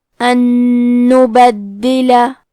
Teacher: ان نبدلہ، کلمت نبدلہ میں دال پہ تشدید ہے، لہذا 2 حرف کے برابر دال کو پڑھیں گے اور زیر کو ظاہر کریں گے